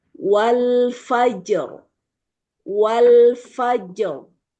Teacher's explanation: Jadi ron-nya ini tebal ya posisinya, Bu. Karena sebelumnya huruf berharakat fathah gitu.